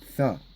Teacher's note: Ça, tu prononces plus long, deux fois.